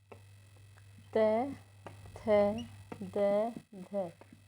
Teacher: त, थ, द, ध ये दंत से बोला जाता है